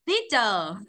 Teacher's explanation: Thì chữ tờ ra hơi, chữ Y có dài.